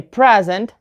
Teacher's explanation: if you say present and the stress is on the first syllable present then you have a noun but if you put the stress on the second syllable then